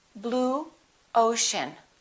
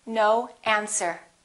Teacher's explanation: put a little w in there